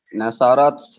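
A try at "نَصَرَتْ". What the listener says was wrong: Mumtaz.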